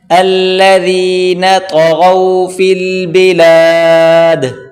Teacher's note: طا اور غین موٹا کریں